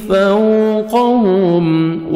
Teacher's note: واولین lips کو round میں لے کے جائیں گے۔ فوق، قاف کو موٹا کر کے پڑھیں گے۔